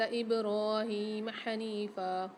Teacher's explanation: حنیفہ میں نون کے ساتھ یا ساکن ایک الف کی مقدار کھینچیں گے، فا کے ساتھ بھی الف آ رہا ہے ایک الف کی مقدار کھینچ کے پڑھیں گے۔